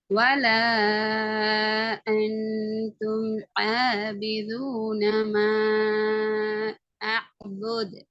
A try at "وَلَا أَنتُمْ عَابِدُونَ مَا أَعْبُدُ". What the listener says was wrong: Good.